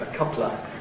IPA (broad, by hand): ə ˈkʌplə